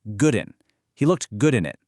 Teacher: carries that D from the word good right over onto the I in in. It creates this completely blurred boundary sounding like gooden.